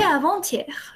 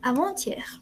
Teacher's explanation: La T y la A se unen.